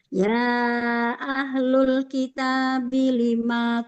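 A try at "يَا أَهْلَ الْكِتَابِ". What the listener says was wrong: Ahlal bukan ahlul. Ahlal. Fathah.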